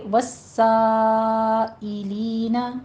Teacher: سا کے اوپر 5 کاؤنٹ کریں گے، مد متصل واجب ہے، اور آگے ساعی نہیں ہے، عین نہیں ہے، حمزہ ہے